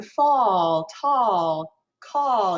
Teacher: in america we tend to have this more warm sounding ah